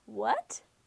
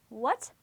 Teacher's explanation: can you feel your voice going up as you say them well that's the second tone what it sounds like a question word in English what it's